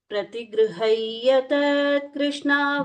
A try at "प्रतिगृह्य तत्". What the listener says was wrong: Don't say tat. Ta will sound like dirgha. Pratigrihaya tat Krishna. Tat. Not tat.